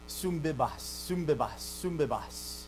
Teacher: So they're both nasals, so it isn't a radical change to a totally different thing, right? It's still a nasal, but it becomes a labial nasal because the beta, b, b, it's a bilabial.